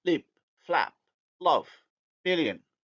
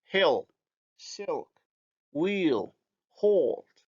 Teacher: The light L is alveolar, hence plus anterior, and the dark L is post-alveolar, or let's say palatal-alveolar. Therefore, it's going to be represented as the feature minus anterior.